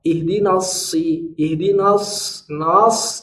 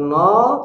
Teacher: Ihdina, yang tebal itu sod, nanya tidak mau dia, tidak boleh ikut tebal dia. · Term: huruf tipis